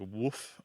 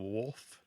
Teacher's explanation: And so the L kind of disappears. It sounds like woof instead of wolf.